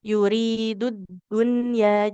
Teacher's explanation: meskipun dia nun sukun ketemu ya, nun sukunnya tetap kita baca izhar atau jelas ya. Jadi ada pengecualian dia seperti itu.